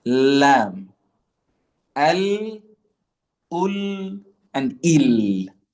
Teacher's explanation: the part where your tongue moves to when pronouncing the letter lam, okay, it is the hard palate. And this is going to be behind the front teeth.